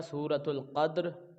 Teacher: یہ دال ساکن ہے، دال ساکن ہونے کی وجہ سے یہ حروف قلقلہ ہے، جنبش کے ساتھ ہم اس کو پڑھیں گے، آواز لوٹ کر آئے گی